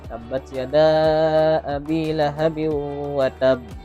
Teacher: Khususnya di qalqalah di ayat pertama karena dia ada huruf qalqalah, kemudian di atasnya ada tasydid, maka dibacanya selain dipantulkan juga ditahan dulu sebentar.